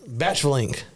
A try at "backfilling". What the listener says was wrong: I think it's not the ch sound. I think you can lose that. I think it's just back.